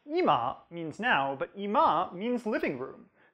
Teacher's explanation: For now, the pitch drops on the first syllable, but for living room, it drops on the second.